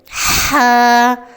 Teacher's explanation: یہ بھی گلے کے درمیانی حصے سے نکلتا ہے، لیکن عین سے بالکل مختلف انداز میں۔ ہا کی پہچان، یہ حرف نرم، سانس والا اور ہلکا ہوتا ہے۔ · جب آپ اس پر ہا ایسے اپنی سانس نکالیں گے، ہا، تو تیز ہوا کے ساتھ جب ہم سانس چھوڑیں گے شیشے پر تو ہا ادا ہوگا۔ جیسے سردیوں میں آپ شیشے پر سانس چھوڑ دیں، ہا، یہی ہا ہے۔ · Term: حرف ہا